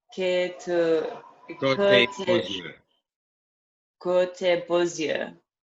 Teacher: Because the X becomes a Z. Same as S. It's a liaison with the next word.